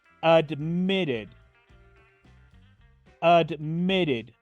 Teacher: la Ed final de este verbo la pronuncio como una ID